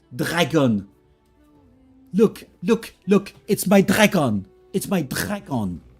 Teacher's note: So very, very strong throat R, which is a guttural sound almost.